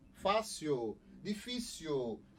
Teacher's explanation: o l tem som de u · houve a substituição de uma consoante por uma semivogal